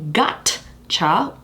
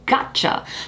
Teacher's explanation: we don't really release the t because it leads straight onto that cha part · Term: tensed consonant